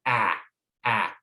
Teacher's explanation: this sound you have to drop your jaw quite low but it's a sound that's near the front of the mouth it's not further back so ah ah if you had a little ball on your · to get this sound you have to drop your jaw quite low but it's a sound that's near the front of the mouth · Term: short a sound